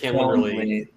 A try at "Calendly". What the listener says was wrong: There's no R, so